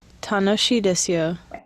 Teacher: the key point is that this person does not start with the low at the beginning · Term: pitch accent error